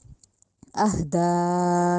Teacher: आह में जो हा है वो हलक वाला नहीं है, उसको हलक से अदा नहीं करना, हा सीने वाली साइड से अदा होगा